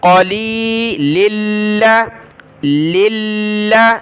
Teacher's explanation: لام کو اگلے لام کے ساتھ ملائیں گے، اور لام کے اوپر تشدید ہے تو اس کو جمع کر سختی کے ساتھ پڑھنا ہے